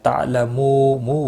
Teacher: واو مدہ ہے ایک الف کے برابر کھینچ کر پڑھنا ہے